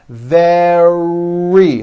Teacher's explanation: Make sure that the R sound is strong and your lips are coming forward. Your tongue is back and you push out the R.